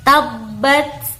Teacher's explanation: Pemirsa, huruf ta itu jika disukun itu cara membacanya menyerupai, agak mirip-mirip huruf ta. Jadi kalau huruf ta mati, tabbat seperti itu, ada mendesisnya sedikit.